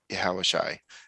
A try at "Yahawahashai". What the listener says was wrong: It's close. It's just Yahawahashai. It's just there's an There's a sha, right? The ah. We weren't pronouncing the second.